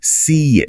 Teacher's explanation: a tiny I sound is often inserted